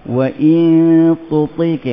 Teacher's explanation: Ni hujung lidah, menyentuh gigi kacip dia belakang huruf ta tu.